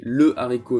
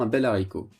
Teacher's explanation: le h de haricot est aspiré c'est à dire qu'il interdit la liaison